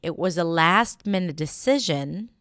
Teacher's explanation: when I want to say something like, It was a last-minute decision, I would put the stress on 'last'.